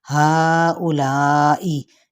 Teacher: چار حرکت کھینچتے ہوئے حمزہ کی پیش کو لمبا نہیں کریں گے، اسی طرح چار حرکت کھینچتے ہوئے ادھر حمزہ کی پیش کو زیر کو لمبا نہیں کریں گے، یعنی کسرہ کو۔